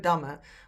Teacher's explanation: When we speak, we usually just pronounce one m.